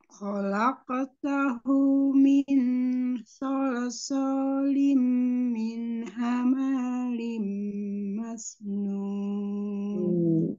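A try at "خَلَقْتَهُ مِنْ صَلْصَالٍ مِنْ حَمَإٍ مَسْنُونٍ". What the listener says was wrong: Hama, mimnya pendek ya Umi, tidak hamain. Coba diulang dari sol-solin tadi kurang didengung.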